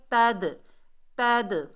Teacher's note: کے درمیان سے، اور تا کو دال ساکن سے ملائیں گے، دال ساکن میں ڈبل ساؤنڈ آئے گی، کلکلا پیدا ہوگا